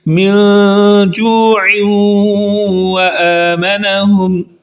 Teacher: پہلا من جوع پر اخفا ہو رہا ہے اور آگے ادغام ہو رہا ہے، من جوع پر ادغام ہو رہا ہے، تو پہلے ناک میں آواز کو چھپا کر پڑھیں گے اور دوسرا غنہ کر کے پڑھیں گے